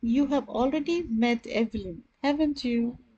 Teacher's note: my voice more or less dropped down the intonation was down